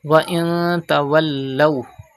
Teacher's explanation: Ta is an ikhfa letter. The rule ikhfa will be done and gunna will be done in noon sakin. Gunna means taking the sound into the nose.